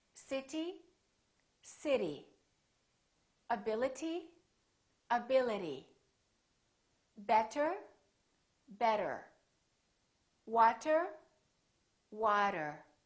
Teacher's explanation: when the t is between two vowels the t sounds more like a d sound or what we call a very fast d · those words that i said had a t in it but the t didn't really sound like tu no it didn't it sounded more like a d sound